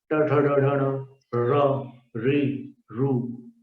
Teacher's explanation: फिर श, षटकोण वाला जो श है, उसका उच्चारण स्थान भी मूर्धा है। जीभ को सिर की तरफ ले जाकर के उच्चारण करते हैं।